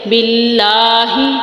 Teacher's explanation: من یقول آمنا باللہ. اب اللہ کے نام سے پہلے زیر ہے تو اس کو ہم باریک پڑھیں گے